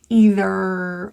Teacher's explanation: So if you tend to drop them or vowelize them, try to pull that tongue back and really fully pronounce an R. Either, a rhotic R.